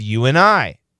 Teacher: That N kills the D. So we have you and I. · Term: cancellation